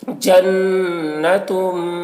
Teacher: تنوین کو میم سے ملا کر غنہ کے ساتھ میں پڑھیں گے ، اس کو ادغام ناقص کہتے ہیں، اس کو ادغام ناقص